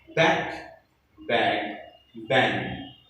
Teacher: velar, k sound, g sound, and ang sound, raising the back of the tongue to the soft palate.